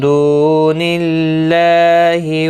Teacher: اللہ کا لام زیر کی وجہ سے باریک پڑا جائے گا، اس کے اوپر کھڑی زبر بھی ہے، ایک الف کی مقدار کے برابر کھینچ کر پڑھیں گے.